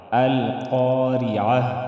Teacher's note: وقف کی صورت میں تا کو ہم ہاں میں بدل دیں گے